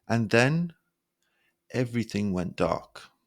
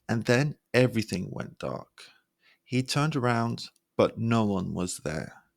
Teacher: Say these slowly, lowering your voice at the end for effect.